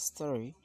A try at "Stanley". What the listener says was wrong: You're kind of pronouncing this word as Stally, but the word is Stanley. Stanley.